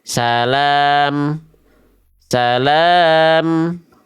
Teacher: enggak dibaca mun lagi, tapi dibaca em aja, enggak pakai mun. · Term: mim sukun